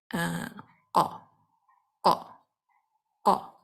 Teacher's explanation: تو اگر آپ اس قا کی آواز کو اپنے ہونٹوں سے ادا کرنے کی کوشش کریں، وہاں سے یہ آواز نکالنے کی کوشش کریں، تو آپ نہیں نکال پائیں گے، کیونکہ اس کی آواز وہاں سے نکل ہی نہیں سکتی. اس کی آواز کو نکالنے کے لیے آپ کو زبان کا پچھلا حصہ یوز کرنا پڑے گا، جو آپ کے پیلٹ کو لگے گا